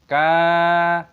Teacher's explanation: huruf kaf juga dipanjangkan, ada tanda alif, mad thabi'i, panjangkan dua ketukan. Kanat, huruf t memiliki tanda sukun, berhenti, kanat.